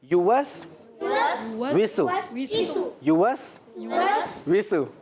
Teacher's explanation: یہ جو پیش ہے نا اس میں بھی ہونٹ گول کرتے ہیں